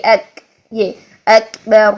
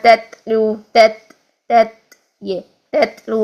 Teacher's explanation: تو یہ اس طرح سے بنیں گے محموسہ شدیدہ حروف. ٹھیک ہے، پہلے شدت ادا کریں، آواز کو روکیں، ٹھیک ہے، بند کریں، پھر اس کے بعد ہمس والی ساؤنڈ یعنی بیس بنائیں. اس کی سانس، اس کی صرف بیس بننی چاہیے، ایک، یہ ایک.